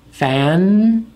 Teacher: The tip of the tongue touches the alveolar ridge. Fan. And it holds there. It's a nasal sound. You can feel it in your nose.